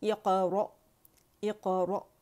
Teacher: اقرأ، اقرأ، را مخفف ہے اور ر یہ جو ہمارے پاس حمزہ ہے باریک ہے تو ر، ٹھیک ہے، رو نہیں کریں گے، ر، اور حمزہ کو باریکی سے جھٹکے سے اقص الحلق سے ہم ادا کریں گے، کیونکہ ساکن ہے، حمزہ ساکن ہوتا ہے، جھٹکے سے پڑھا جاتا ہے، اس میں پیٹ نہیں ہلائیں گے، ٹھیک ہے۔